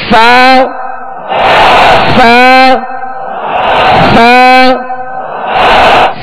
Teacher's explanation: اوپر کے سامنے والے 2 دانتوں کے کنارے اور نچلے ہونٹ کا تر حصہ, ایک اس کا خشک حصہ ہوتا ہے اور دوسرا تر حصہ تھوڑا سا اندر, تو اس سے ادا ہوتا ہے.